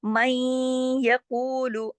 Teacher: अब देखिए नून साकिन के बाद या आ गया, यहाँ भी इदगाम हो रहा है